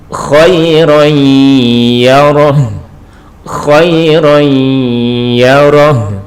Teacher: Jadi ron di sini dimasukkan kepada ya disertai dengan berdengung. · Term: idgham bihunah